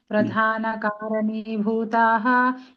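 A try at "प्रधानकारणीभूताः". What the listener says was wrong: ఇక్కడ మీకు చాలా నేను గమనించేమంటే, ఈ భూతాహ అంటే ఈ విసర్గలు ఎక్కడ పెట్టాలి ఎక్కడ ఉండకూడదు అనేది కొంచెం క్లారిటీ. కారణి చెప్తాను, ప్రధాన కారణి చెప్తానండి. ప్రధాన కారణి భూతకు ప్రధాన కారణి భూతాహకు చాలా తేడా వచ్చేస్తుంది.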